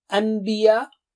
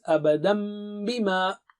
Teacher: After saying an, as you join your lips for saying ba, an, you see what happened? Meme sound comes automatically. An. So what they did is change it to meme.